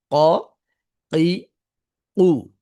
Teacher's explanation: ক এই যে এখন ক যখন বলতে গিয়েছি তখন এই যে বাতাসটা এই দুই নরম বস্তুর মাঝখানে আটকে তারপর যেভাবে ছুটে গেল ছুটলো ছুটার মধ্য দিয়ে যে সাউন্ডটা হলো এটাই মূলত হচ্ছে ক এটাই মূলত হচ্ছে কি কফ এইযে কফের সাউন্ডটা ক ঠিক আছে এখন যেহেতু যেহবার গোড়াটা উপরের দিকে থাকে এইজন্য আওয়াজটা মোটা হয়